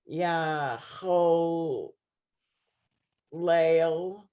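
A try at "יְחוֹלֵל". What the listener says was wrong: Okay, so it's Yecholel. Not Yah, it's Yecholel.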